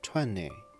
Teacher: The second T kind of disappears, but more precisely, it becomes nasal. · Since the tongue is already in the ''n'' position,— it just stays there and lets the air escape through the nose, instead of releasing a “t” burst.